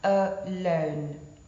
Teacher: one unstressed followed by stressed syllable, such as in the word alone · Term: I am